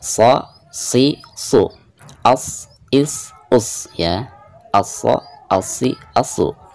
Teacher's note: bedanya jika shad itu sifatnya isti'la, jadi tengah lidah keangkat ke atas ya.